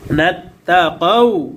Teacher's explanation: জবরের পরে ওয়াও সাকিন, লিনের হরফ, তাড়াতাড়ি উচ্চারণ হবে। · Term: মাদ্দে লিন